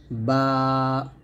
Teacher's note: দুই ঠোঁট মিল উচ্চারণ করবেন